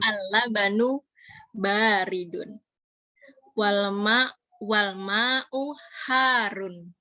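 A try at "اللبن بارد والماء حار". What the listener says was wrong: Al-labanu baridun wal ma'u harun. Hati-hati, barid ini baknya panjang, bukan roknya yang panjang. Baridun. Al-labanu baridun wal ma'u harun.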